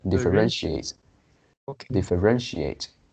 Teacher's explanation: so the pronunciation stress is on the third syllable